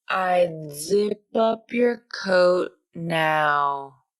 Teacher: the tongue tip is lower in the mouth and actually touches the back of the upper front teeth for the D sound